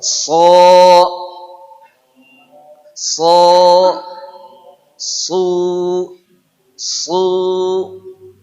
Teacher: punya sifat istilla yaitu naiknya pangkal lidah